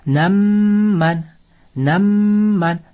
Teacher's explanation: Sukunlik mim harfidan so'ng yana bitta mim harfi kelib qolsa, ikkita mimni birlashtirib g'unna bilan o'qiymiz. Ya'niki namman namman g'unna bo'lishi kerak bu yerda shuning uchun idg'om shafavya deb atilardi.